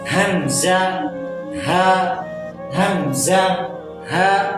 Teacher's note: حمزہ، ہا ادا ہوتے ہیں اقصی حلق سے، یعنی گلے کے نیچے والے حصے سے جو سینے کی جانب ہے